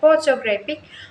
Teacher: the stress falls on the first syllable photographic, but there is also a later stress on the third syllable.